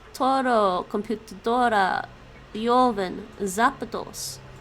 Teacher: all have their accent on the next to last syllable